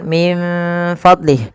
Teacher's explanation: Kita membacanya menyamarkan nunnya kepada huruf fa.